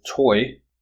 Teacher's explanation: the tongue changes from a low back position to a high front position · position to a high front position low back high front and the shape of the lips also changes from a rounded or to an unrounded shape · we perceive a transition from one vowel quality to another